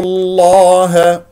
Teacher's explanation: لام اسم الجلال الله مفخم لانه قبله مضموم